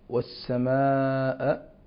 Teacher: مد لقالون بأربع حركات وهو مد متصل يسمى بالمد المتصل الواجب